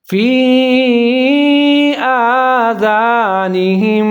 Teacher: یہاں زال کا خیال رکھنا ہے، زا نہیں پڑھنا ہے اس کو